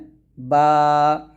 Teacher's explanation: টি হরফ সহিসিদ্ধ করে শিখবো আলিফ আলিফ আলিফ এরকম তারপরে বা দুই ঠোঁট মিল করে ওই ঠোঁট থেকে উচ্চারণ করতে হবে